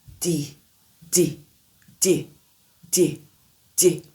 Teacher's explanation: Le D en anglais est plus net. Le D en anglais, la langue est placée vers l'avant, un peu derrière les dents supérieures. Le relâchement rapide et audible, comme si vous poussez un tout petit peu d'air. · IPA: /d/